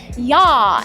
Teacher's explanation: you open and drop your mouth, and it's an extension of just long, open vowels